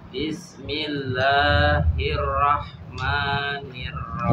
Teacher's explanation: Ro-nya masih masih kurang tebal. Tafhimnya masih kurang tebal. Masih terdengar fathah yang biasa.